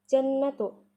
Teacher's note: Nun yang bertasydid dibaca hunnah. Hukum bacaannya hunnah.